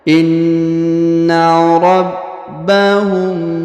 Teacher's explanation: huruf mim sukun bertemu dengan ba atau bi di sini, maka kita tahan dan dengungkan 2 harokatnya.